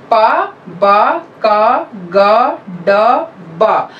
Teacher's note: active और passive articulator हमारे साथ आए, एकदम क्लोजर हो गया और फिर एकदम से हवा का निकलना, सडन रिलीज